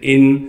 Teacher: حمزہ کو نون ساکن سے ملانا ہے بغیر غننے کے